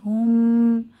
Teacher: মিমের উপরে তাশদিদ ওয়াজিব গুন্না এক আলিফ